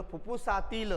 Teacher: फुफ्फुसातील या अनुस्वाराचा उच्चार आपल्याला खणखणीत जाणवलेला नाही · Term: अनुनासिक